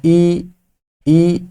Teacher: तो यहाँ पे जो आपका मुंह खुल रहा है ना, ई के लिए कम खुल रहा है